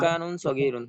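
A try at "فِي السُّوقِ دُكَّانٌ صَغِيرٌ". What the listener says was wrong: যে আবার আপনি পেশ লাগাই দিছেন। কাফের উপর জবর পেশ দিছেন কেন?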